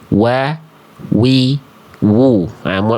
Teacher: tempat keluar huruf wau itu ketika dia dilafalkan itu dari kedua bibir dengan posisi maju seperti pengucapan huruf huruf U alias seperti ini, Bunda, Abang, Kakak, Ayahanda sekalian. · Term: huruf waw